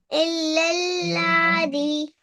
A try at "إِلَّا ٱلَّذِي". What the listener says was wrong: इल्लल्लज़ी। लाम को खींचना नहीं है, वी को खींचना है। इल। लज़ी। इल्लल्लज़ी।